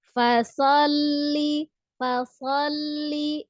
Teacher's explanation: huruf lam adalah sifatnya lunak tengah-tengah bayi ini ya atau tawasut tidak terlalu kuat tidak terlalu lemah